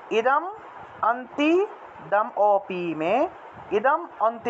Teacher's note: ম থাকায় অ চলে আসলো অর্থাৎ ম উচ্চারণ করলে একটা অ আসে সেজন্য ম টাকে অসন্ত দিয়ে আগের শব্দের সাথে উচ্চারণ করলাম আর